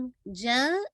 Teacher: middle of the आपकी जो टंग है ये आपके ऊपर के हार्ड पैलेट से मिडल पार्ट से लगती है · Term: जीम